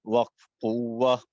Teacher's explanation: گول تا وقف کی حالت میں ہا سے بدل جاتی ہے ، وقف بالابدال ہے۔ سین عین پیش سو، نعی، سعی،